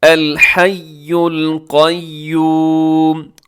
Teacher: قاف اس میں موٹا ہے